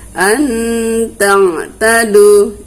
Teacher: Nun matinya tidak boleh dibaca jelas, harus kita baca samar antara nun dengan ta. Ya, dan dia harus kita dengungkan. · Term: ikhfa